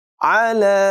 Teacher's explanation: عین کی آواز حلق سے نکالیں گے اور یہاں پر مد منفصل ہے، لمبا کر کے پڑھیں گے.